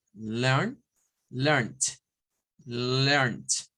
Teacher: lo que se le agrega nada más es un sonido de T a la N del infinitive